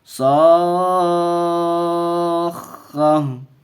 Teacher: تو ہائے ساکنہ بنا کر کے وقف کریں گے